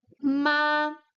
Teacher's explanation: we have seen the first tone it's high it's long and it's stable on the high tone